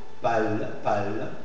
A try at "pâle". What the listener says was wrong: No trabar la palabra entera, sino solo la. Pâle.